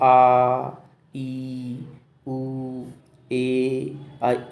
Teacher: 1 मात्रा जितना समय लगता है उन्हें हम ह्रस्व स्वर कहते हैं, और 1 मात्रा से ज़्यादा यानी कि 2 मात्राओं जितना समय लगता है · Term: दीर्घ स्वर